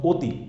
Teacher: অতি বানান হচ্ছে সরোয়া তয়রসিকের তি দিয়ে হলেও আমি যখন উচ্চারণ করছি তখন কিন্তু ও চলে আসছে।